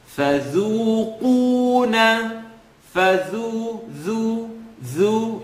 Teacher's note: It's a tip of the tongue, edge of the top teeth. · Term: dhal